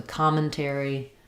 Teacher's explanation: commentary is stressed on the first syllable com, which is important to know because com therefore is going to have the ah sound.